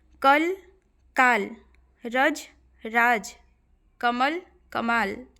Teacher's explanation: लेकिन हिंदी में बोलेंगे तो अ में कम समय आ में ज्यादा समय दुगुना समय है ना जबकि हिंदी भाषी इनका स्पष्ट उच्चारण करते हैं दीर्घ स्वर पर · ठीक है, किसी में दुगुना समय नहीं लगता है, लेकिन हिंदी में बोलेंगे तो अ में कम समय, आ में ज़्यादा समय, दुगुना समय